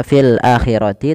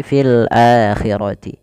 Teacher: Ketiga-tiganya ketika ada hamzah bertemu dengan huruf mad yang tiga alif wau ya maka dinamakan dengan mad badal panjangnya dua harakat